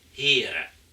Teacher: Und hören im heutigen Westfriesischen ist Heere, also mit entrundetem Vokal.